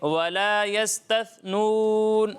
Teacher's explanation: اچھا، یہاں سین اور ثا میں واضح فرق ہونا چاہیے، ٹھیک ہے. سین میں سیٹی کی آواز آئے گی، ثا میں سیٹی کی آواز نہیں آئے گی